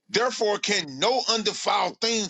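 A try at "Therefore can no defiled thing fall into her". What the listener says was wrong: It don't say therefore can no undefiled thing. it don't say undefiled. says, therefore, can no defiled thing. It don't say undefiled.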